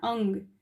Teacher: अंग का उच्चारण हम नासिका से करते हैं